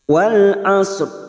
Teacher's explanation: ro tafkim ro yang dibaca tebal mati karena wakaf didahului huruf sukun selain ya